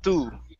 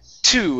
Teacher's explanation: But when I say the word to in English, my tongue comes back a little bit more. It's curved upwards. Okay, instead of laying against the top of my mouth like this and saying tú, it's two. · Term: the T sound in English